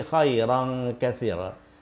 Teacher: Jadi bunyi nun pada khairan tidak dibaca jelas, bunyi nun pada kathiran tidak dibaca jelas. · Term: ikhfa